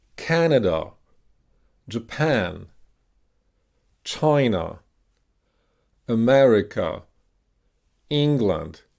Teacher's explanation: Notice how the vowel sound in the stress syllable is extra long.